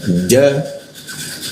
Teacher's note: Nah, ja posisinya di tengah lidah ya.